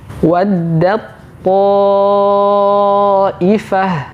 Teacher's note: Huruf ta yang sukun dimasukkan langsung ke huruf ta. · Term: idgham mutajanisain